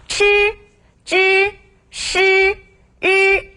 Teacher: 이렇게 혀를 말아서 발음을 한다고 해서 건설음이라고 하는데요